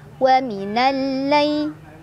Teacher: lam sukun gak dibaca, kita langsung tekan ke lam kedua. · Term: alif lam syamsiah